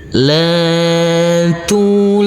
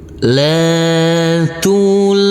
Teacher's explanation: La kita baca panjang dengan panjang 2 harokat. Tulhi, huruf ha ini kita baca panjang dengan panjang 2 harokat. Him, seperti biasa karena kita wakafkan maka berhenti.